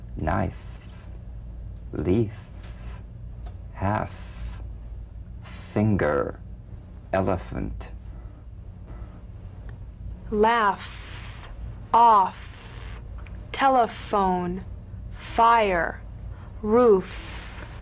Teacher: the unvoiced fricative labiodental upper teeth to lower lip just like the V